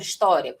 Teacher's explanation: Agora aqui nós temos uma ordem invertida. O i, que é a semivogal, que é o som mais fraco, vem na frente. E o a que vem depois é a vogal, vem depois. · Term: ditongo crescente